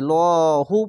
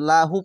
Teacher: এটি মোটা করে লহু পড়বেন লাহু পড়বেন না